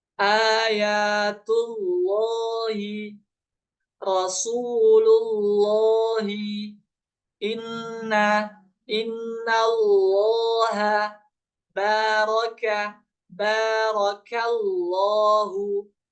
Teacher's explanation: praktik ya Membaca Allah dengan tebal